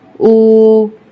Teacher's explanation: حمزہ واو پیش او، واو ساکنہ سے پہلے پیش ہے، اس کو ہم ضرور کھینچیں گے ایک الف کے برابر